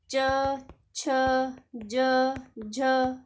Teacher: च, छ, ज, झ स्पर्श संघर्षी व्यंजन है